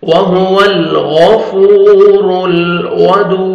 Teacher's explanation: वाव मद है, 1 सेकंड, फा को खींचना है और रा को दम है, रा को मोटा करके लाम के साथ मिलाना है और लाम को आपने हिलाना नहीं है।